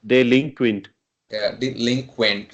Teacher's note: we can say a stress is at second syllable